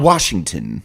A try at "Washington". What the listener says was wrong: Not Washington. There's no R in there. It's silent and invisible.